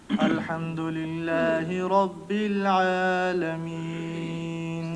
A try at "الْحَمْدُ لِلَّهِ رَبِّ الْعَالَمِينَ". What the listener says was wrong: وہ عالمین کو زیادہ لمبا کرتا ہی نہیں ہے.